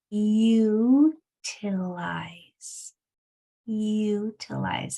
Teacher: or two doors down how about is this word utilize utilize it sounds kind of like a y and it's at the beginning but it's all part of the u sound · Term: long u sound